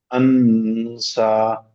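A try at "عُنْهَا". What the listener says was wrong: আন হয়ে যাচ্ছে, আবার আবার আন হয়ে যাচ্ছে, এটা আন হবে না। উনসা।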